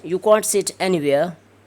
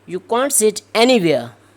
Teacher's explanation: So this anywhere and anywhere here, they will be pronounced with two tunes, with two intonation patterns. Okay, one is rising and falling, and the second one is falling and rising.